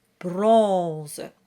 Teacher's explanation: which has the nasal on sound. And make sure it's nice, it starts with a nice round O.